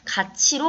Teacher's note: 잇몸 소리인 드트가 이로 시작하는 형식 형태 소리를 만나서 즈츠로 바뀌는 현상을 우리가 구개음화라고 이야기를 합니다.